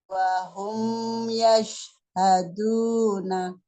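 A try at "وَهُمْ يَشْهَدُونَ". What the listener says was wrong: Terus juga sama nih di shin. Suaranya ngalir juga sampai H. Wahum yashhaduna. Jadi bukan bukan berhenti begitu, bukan. Yashhadu, bukan. Tapi jalanin, suaranya ngalir. Yashhaduna. Wahum yashhaduna.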